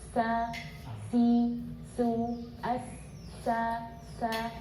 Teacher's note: sifat infitah ini adalah lidah lidah dan langit-langit terbuka